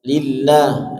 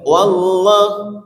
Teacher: Wallah punggung lidah menyentuh langit